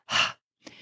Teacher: it's more just the sound of the air coming out of your throat